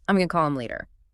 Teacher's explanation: So, gona is the spoken fusion of going to.